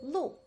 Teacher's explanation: lu, which in the fourth tone means road